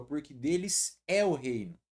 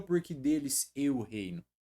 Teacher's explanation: O acento agudo, ele vai te mostrar um timbre, ó, aberto.